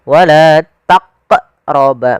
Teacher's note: menambah hamzah pada lafal huruf qafnya